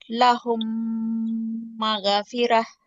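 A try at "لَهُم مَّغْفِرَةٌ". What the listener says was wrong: మగా కాదు మా. లహుం మగ్ఫిర. మగ్ సుకున్ ఉంది. మగ్ మగ్.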